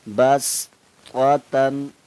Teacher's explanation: سین کو باریک کر کے پڑھنا، سیٹی کی آواز آنی چاہیے